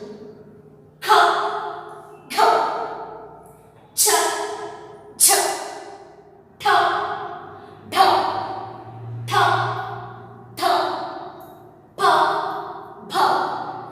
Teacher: ಹೆಚ್ಚು ಉಸಿರಿನಿಂದ ಹೇಳಲ್ಪಡುವ ಅಥವಾ ಉಚ್ಚರಿಸಲ್ಪಡುವ ವ್ಯಂಜನಾಕ್ಷರಗಳಿಗೆ ಮಹಾಪ್ರಾಣ ಎಂದು ಕರೆಯುತ್ತೇವೆ.